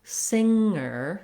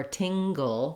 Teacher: words like singer with the NG sound and words like finger or tingle that have the NG plus a G sound